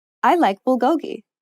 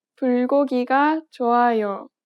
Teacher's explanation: Native speakers do not place stress on any particular syllable.